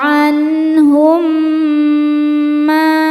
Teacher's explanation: Sebab ada alif sebelumnya baris fathah. Cara bacanya dipanjangkan mimnya dua harakat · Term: mad thobi'i zohiri